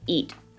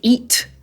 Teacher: when we say eat, we often say ea, we don't say eaT, but we actually just stop the air